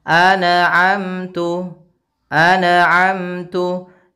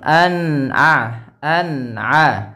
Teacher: Dia tidak boleh mantul suara nun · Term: izhar